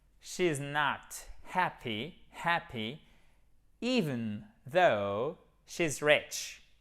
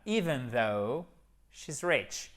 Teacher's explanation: Even, vous avez l'accent tonique sur la première syllabe.